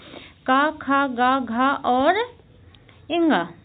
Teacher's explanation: जब हम इन वर्णों का उच्चारण करते हैं तो हमारी जो जीभ है उसका पिछला हिस्सा जीभ के पीछे का हिस्सा कंठ को छूता है · जीभ का पिछला हिस्सा हमारे कंठ को छूता है उन्हें कंठ व्यंजन कहते हैं।